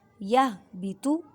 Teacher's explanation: تھوا کو پر پڑھیں، موٹا پڑھیں